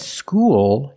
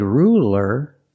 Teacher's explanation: when you said School you used the dark L because the L is at the end of the word after a vowel school and when you said ruler you used a light L